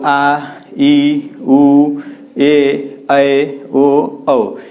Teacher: ऐसे स्वर जिसके उच्चारण में दो मात्रा का समय लगे, यानी ह्रस्व स्वर से दो गुना समय लगे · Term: दीर्घ स्वर